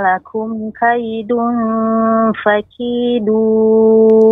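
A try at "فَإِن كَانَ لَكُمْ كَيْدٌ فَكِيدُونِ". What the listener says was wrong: Ya, untuk dal tidak ujung tepat pada ujungnya, namun bagian punggung ujung lidah. Fa in kana lakum kaidun, da itu punggung. Bagian ujung namun bagian punggung ujung lidah. Ya, kaidun fakidun. Bedakan dengan kaidun fakidun. Nah, ini bisa dengan ujungnya. Nah, kurang tepat. Yang tepat bagian punggung ujung lidah.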